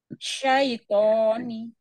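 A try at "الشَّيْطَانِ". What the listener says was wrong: Ya, tapi to-nya dua harokat ya. Satu ayunan saja.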